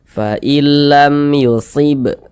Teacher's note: Tapi kalau ada mim sukun tidak berjumpa dengan huruf ba, tidak berjumpa dengan huruf mim, maka hukumnya adalah izhar syafawi. Karena dia izhar maka baca jelas, tak berdengung.